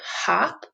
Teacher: In the word hop, the O is making the ah sound, the short sound